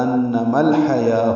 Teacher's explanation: ہا وسط حلق سے ادا کریں گے، یا پر کھڑا زبر ہونے کی وجہ سے 2 حرکات لمبا کریں گے، واو نہیں پڑھیں گے.